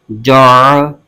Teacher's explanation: تو ناظرین یہ بیچ میں عین حرف ہے، تو عین کو اس کے مخرج سے ادا کرنا ضروری ہے، ورنہ عین کی جگہ حمزہ کی آواز نکل جائے گی جو کہ حرف تبدیل ہو جائے گا۔ عین کو حلق کے درمیان سے ادا کرنا ہوتا ہے، تو اس کی آواز حلق کے درمیان سے آنی چاہیے